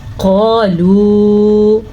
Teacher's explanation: قاف کو پر پڑھنا ہے اور الف مدہ کے ساتھ پڑھنا ہے کیونکہ قاف زبر الف قا، لام پیش واو لو، اوپر مد بھی ہے تو لام پیش واو مد لو.